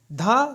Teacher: धा सघोष है महाप्राण है लेकिन ओट नहीं है यह दंत है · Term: सघोष महाप्राण